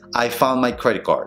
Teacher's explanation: vas a decir rápidamente, comiéndote tanto las T's como las D's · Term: eliminación de las D's